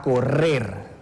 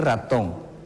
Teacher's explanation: la pronunciación es un poco más larga cuando existe una doble R